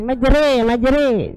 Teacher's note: Fathah bukan alif. Memiringkan bunyi fathah ke kasrah atau mencondongkan bunyi fathah ke kasrah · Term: imalah